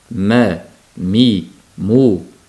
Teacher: nun bilan mim harakatli bo'lganda bu anqos g'unna deyiladi. Eng qisqa, eng noqis g'unna degani.